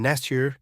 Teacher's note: there's assimilation, where t plus y become ch